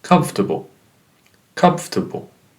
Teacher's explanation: it's only three syllables comfortable and the stress is in the first one